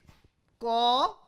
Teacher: If I say Ka is unvoiced, unaspirated. During the production of the Ka, the back of the tongue touches the velar position, but vocal cord is open. So, there is no voicing during the occlusion, that is why it is called unvoiced plosive, unvoiced velar, unvoiced.